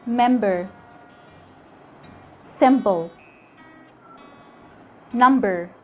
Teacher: the b is going to be pronounced normally after an m when it comes in the middle of a word